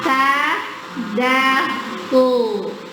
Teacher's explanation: Torofu itu ujung lidah. Bersentuhan dengan gusi gigi seri bagian atas. Bagian dalamnya ya.